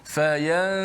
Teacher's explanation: Contoh, fayansakhu, masa sebut ya saja, habis ya saja, lidah kita dah pergi kepada makhraj huruf selepas nun tu, huruf sin lah. Okey, dan nun tu dikekalkan pada gunnah khayshum saja.